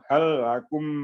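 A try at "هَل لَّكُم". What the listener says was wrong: Halakum panjang kumnya. Mim panjang juga.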